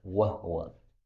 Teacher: qiraah Ibnu Katsir boleh dengan sukun ha